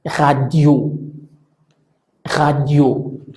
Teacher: La R es gutural, no importa en qué parte esté, ya sea al inicio, al final, en medio, la tendencia es que se pronuncia como gutural. · La sílaba tónica, esto es la sílaba que vamos a pronunciar con mayor énfasis o más alto, es la última sílaba que pronunciamos en la palabra.